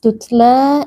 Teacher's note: karena ada Alif sebelumnya berharakat fathah dibaca panjang dua harakat tutla huruf ta kita keluarkan sedikit nafas